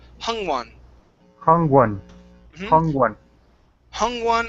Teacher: what you want to do here with these two words, you want to connect hung and one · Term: connect the words